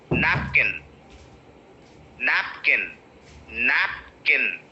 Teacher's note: nap is the point where you have to break and you have to stress nap